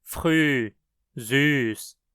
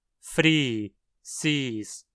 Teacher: o alemão padrão possui as vogais anteriores arredondadas yː, ʏ, øː, œ. Elas não existem em hunsriqueano, sendo pronunciadas como iː, i, eː, e.